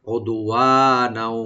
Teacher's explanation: কলকলা করব, ওদু ওয়া, what a open রেখে একালে টানবো, আর নাও নুন উপরে যে তানভিন আছে এটা ওয়ার সাথে মিলে সংযোগ করে পড়বো আমরা গুন্না সহকারে